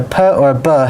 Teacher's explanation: a pet or a bug has to stop basically as soon as you close the mouth